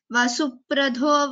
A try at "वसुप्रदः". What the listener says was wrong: I guess Vasuprado, it is Alpa Prana. There's no, it is not Vasupradho. I heard it as Vasupradho.